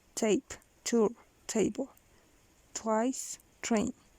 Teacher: Voiceless fortis alveolar plosive, aspirated